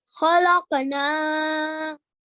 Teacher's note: the noon you prolong for 2 seconds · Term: Alif Madhya